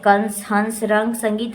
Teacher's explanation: इस ध्वनि का उच्चारण नाक से होता है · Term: अनुस्वार